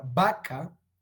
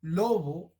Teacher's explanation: los labios se aproximan y dejan un canal estrecho que produce fricción